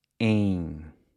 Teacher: the pronunciation of the en, which sounds almost like it's got a G attached to the end.